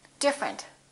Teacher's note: we say different the e disappears